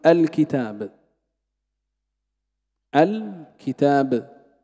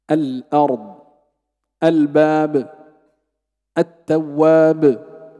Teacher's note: همزه الوصل اذا ابتدات بالكلمه تفتحها